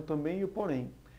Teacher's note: uma das palavras também e porém a tonicidade é a mesma a tônica realmente é a última sendo uma palavra oxítona e quanto tendem a pronúncia mais forte fica na sílaba tem